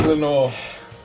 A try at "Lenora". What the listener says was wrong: Well, it's Lenora. Well, no, it wasn't. You didn't pronounce the A.